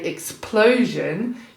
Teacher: So if explosion is probably a really good word to test plosives. You put your fingers just in front of your mouth and you say explosion, you will feel that rush with that P